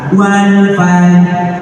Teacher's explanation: Qalqalahnya tipis karena berhadapan dengan akhir ayat. Rohnya nyaris tidak terdengar. Lidah seperti akan mengucapkan tapi tidak keluar suara keras.